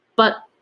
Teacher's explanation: the air cuts sharply in your throat. So it's but, not it's but, because T is still there.